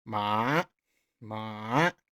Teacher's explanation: you start at 2, go down to 1, go way down deep, and then go up to 4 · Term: third tone